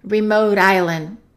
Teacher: Let's connect remote and island, and that T is going to be between two vowels, so it's a fast D